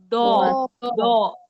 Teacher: हमारा मुंह थोड़ा सा गोल हो रहा है, खुल रहा है, जैसे मुंह में हम कुछ भर के बोल रहे हैं, थोड़ी सी जबान उठ रही है। · लास्ट का साउंड आपका ओ का आना चाहिए, बहुत ज्यादा मुंह गोल नहीं होना चाहिए